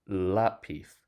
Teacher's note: the stress falls on the second to last instead of the last. So we put an accent mark on the syllable that's actually stressed, the la.